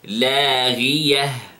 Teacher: Notice here the sound of the ghain. It is the lowest level of heaviness, of tafkhim.